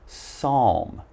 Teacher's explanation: remember we have a silent p so just pronounce the S